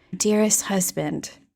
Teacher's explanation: I'd written a letter as if it was an historical document and I had read it really breathy.